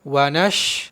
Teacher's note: شین زبان کا بیچ اوپر کے تالو سے مل کر ادا ہوتا ہے۔